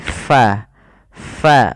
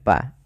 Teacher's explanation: sifat huruf Fa itu Hamas artinya apa jaryanun nafas jaryanu annafas mengalirnya nafas kita ketika melafalkannya sehingga tidak dibaca dengan pa tapi fa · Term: sifat hams